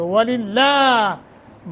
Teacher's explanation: وَلِلَّهِ واو موٹا، لفظ اللہ کو باریک پڑھیں گے کیونکہ ما قبل کسرہ آ گیا ہے. لفظ اللہ سے پہلے حرف پر زیر ہو تو لفظ اللہ کو ترقیق یعنی باریک پڑھتے ہیں.